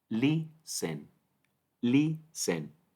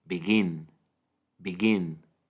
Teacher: la Stress silabo o sílaba tónica en lisen es la primera len len y en begin es la segunda